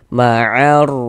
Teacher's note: Ma'arraki'in, huruf ra memiliki tanda baca fathah ya. Nah, maka huruf ra dibaca tafkhim, kemudian huruf ra dibaca panjang. Pasti di sini sudah tahu tanda panjangnya apa, karena di atas huruf ra ada ini.